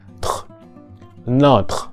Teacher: The plosive t being an unvoiced consonant and the fricative r, which is originally a voiced consonant, but in this cluster it becomes unvoiced. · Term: cluster tr